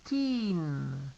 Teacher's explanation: En 13, el sonido de teen es alargado. Teen. Si no lo alargas, se va a parecer al 30.